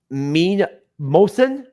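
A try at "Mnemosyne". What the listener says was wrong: The M is silent. It's the just the end.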